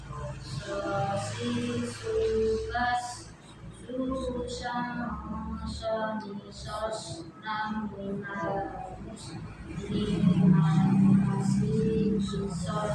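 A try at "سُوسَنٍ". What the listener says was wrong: Jangan terpotong Bu ya. Ketika sukun jangan so ni sos. Nah, tapi disambung so ni sos nah, so ni sos nah gitu ya.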